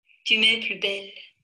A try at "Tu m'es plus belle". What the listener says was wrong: «Tu m'es plus belle», и опять было быстро. То есть, говорю, впечатление общее, хорошее, но с точки зрения фонетики, а это все-таки мы на фонетике сейчас работаем, мне хотелось бы большего.